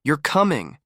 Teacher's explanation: Feel your voice rise at the end.